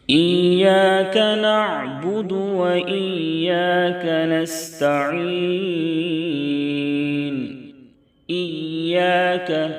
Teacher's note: یا کے اوپر تشدید ہے، یا کو تھوڑی سی سختی سے پڑھیں گے